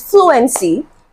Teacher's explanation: fluency is stressed at the beginning of the word the first um syllable is stressed in the word fluency so